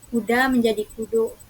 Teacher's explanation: bahasa Minang juga mengalami perubahan vokal misalnya A menjadi O